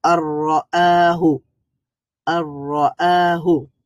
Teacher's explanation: sound ছিল তো যেহেতু র এটা হচ্ছে একটা ইদগামের হরফ আর ইদগাম হলে যে সাউন্ডটা মার্জ হয়ে যায় একসাথে যুক্ত হয়ে যায় এইজন্য সেখানে আর ন সাউন্ডটা বাকি থাকবে না ন সাউন্ডের জায়গায় র সাউন্ডটা প্রবেশ করবে